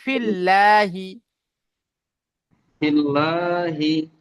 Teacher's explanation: আল্লাহ শব্দের লামের আগে যদি বা জের থাকে তাহলে আল্লাহ শব্দের লামকে বারিক করে পড়তে হয়। তাহলে বারিক জি অর্থাৎ লা, আপনি এখানে পড়লেন লাম ফিল, ফিল ল পড়লেন, ও তো এখানে হবে জি ফিল্লাহি।